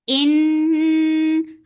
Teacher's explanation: Noon will get sifa of gunna. This gunna is akmal, so keep the sound in your nose for a longer time. Ni 4 counts long.